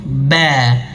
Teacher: seperti huruf ba, mim sama 2 bibir yang menyentuh, ba. 2 bibir yang menyentuh.